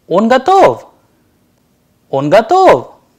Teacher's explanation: sentences in the interrogative when the intonation is rising at the end